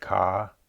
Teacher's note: The word ka begins with a high-class consonant and ends with a long vowel. There is no tone marker or ending consonant, so this would be a low-rising tone.